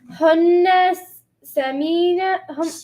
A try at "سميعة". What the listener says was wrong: Now the only problem left is you saying سميعة and the me part is too long.